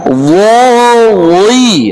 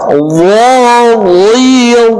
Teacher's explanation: naik pangkal lidahnya walaupun dia kasrah